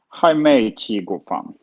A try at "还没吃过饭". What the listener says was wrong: Your 吃 is turning into qi now. Like open up your lips almost. 吃. 还没吃过饭.